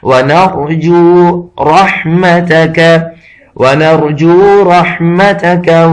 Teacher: را اگرچہ جزم ہے لیکن اس سے پیچھے زبر آ رہا ہے یا پیش آ رہا ہو تو یہ را پر کر کے پڑھا جاتا ہے